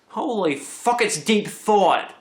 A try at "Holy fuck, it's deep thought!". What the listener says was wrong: Why are you saying it like Long Island wise? It's deep thought. Thought. T-H-O-T.